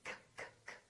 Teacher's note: this K is voiceless